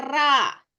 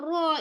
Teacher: betul sebab huruf ra ini dibariskan dengan baris atas okey jadi apabila R dibariskan dengan baris atas mesti menggunakan vokal o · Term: dibaca tebal